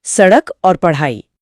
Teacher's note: अच्छा, बिंदी वाला फर्क है इसमें। हाँ, उच्चारण में जीभ ऊपर उठकर झटके से नीचे गिरती है। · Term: उत्क्षिप्त, उत्क्षिप्त व्यंजन